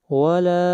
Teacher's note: مد منفصل ہے، اس کو 3 الف کے برابر لمبا کریں گے